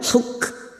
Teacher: huruf Kaf sukun yang memiliki sifat hams dan sidah